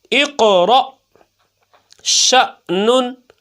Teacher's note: تو حمزہ ساکنہ کو پھر کیسے پڑھتے ہیں ہم، جھٹکا دے کر